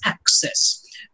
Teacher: the modern pronunciation of access places the stress on the first syllable